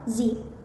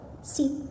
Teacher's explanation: The difference is the Z use vocal cord vibration, while S does not.